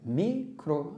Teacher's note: Micro termina em vogal átona, até porque a sílaba tônica está no mi.